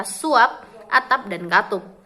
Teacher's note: Bila berada pada akhir kata, fonem P tidak diucapkan secara lepas. Bibir kita masih tetap tertutup rapat